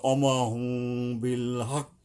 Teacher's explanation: মিম টাকে আমরা গোপন করব গোপন করা কি একটা অনুস্বরের মত আসবে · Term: ইকফা